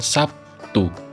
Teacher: terlihat bunyi B berubah menjadi Bunyi P sebagai akibat dari pengaruh bunyi t Perubahan tersebut merupakan jenis asimilasi fonemis Namun demikian asimilasi fonemis hanya